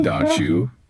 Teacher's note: Another one that pops up everywhere is don't you, becoming don't you. That T sound, it gets nudged by that J that follows it.